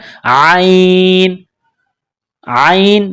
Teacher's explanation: عین گلے کے درمیان سے عین کو نکالنا ہے زور لگا کر